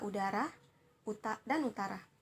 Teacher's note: u kecil ini termasuk vokal belakang artinya dalam pembunyian bunyi u ini itu lidah berada di belakang termasuk dalam tinggi atas dalam pembunyian bunyi u ini mulut membundar · Dalam pembunyian bunyi U ini, mulut membundar serta termasuk dalam vokal tertutup